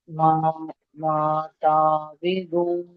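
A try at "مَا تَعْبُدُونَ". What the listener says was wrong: তা'বিদুন পড়ছেন, বা পেশবু আছে, মা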